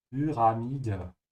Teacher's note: You should pronounce the y like a soft u with umlaut.